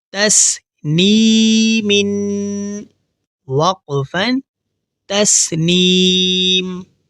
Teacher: اس لفظ کو پڑھتے ہوئے ہمیں یہ دھیان رکھنا ہے کہ ہماری آواز ناک میں نہ جائے، تو ہمیں نون کی آواز ناک میں لے جانے سے بچانی ہے.